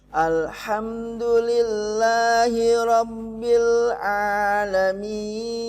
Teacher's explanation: ada huruf ada Mad Thobi'i mad asli cukup satu ayunan saja